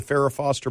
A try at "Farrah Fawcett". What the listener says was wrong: Farrah Fawcett poster? Yeah. You said Foster. Foster poster, yeah. Yeah.